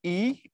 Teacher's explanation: অর্থাৎ তুমি যখন উচ্চারণ করো ই, এটা সামনে এসে উচ্চারিত হয়। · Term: সম্মুখ